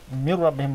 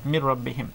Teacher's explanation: raw will not be pronounced with tafkheem here, will be empty mouth, because raw before it is kasra